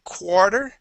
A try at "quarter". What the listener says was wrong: Yeah, so instead of pronouncing that AR, it's more of an OR sound, quarter, okay?